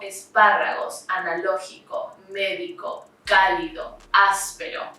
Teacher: these are the words that are stressed on the third and fourth to last syllables respectively they always have tilde or spelled accent mark for example esparagos